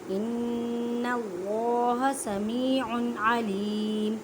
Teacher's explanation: ایک الف کی مقدار میں اللہ کے لفظ کو موٹا پڑھیں کیونکہ اللہ کے لفظ سے پہلے زبر ہے